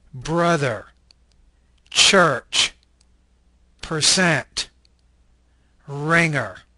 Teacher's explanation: This is an alveolar, retroflex liquid voice consonant. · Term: Syllabic R